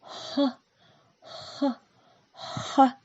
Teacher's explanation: Когда мы его произносим, воздух быстро выходит из горла, не встречая никаких преград. Представьте, что вы дышите на снежинку, чтобы она растаяла. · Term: Звук «х»